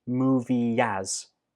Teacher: Ya is the sound that links these 2 words. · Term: linking